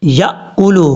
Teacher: یا کے بعد جو حمزہ ہے جھٹکی کے ساتھ پڑھا جائے گا